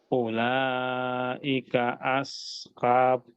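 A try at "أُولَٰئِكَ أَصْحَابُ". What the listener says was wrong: lalu unya di sini pak pendek ya karena wwnya tidak ada tanda sukunnya jadi Ula langsung aja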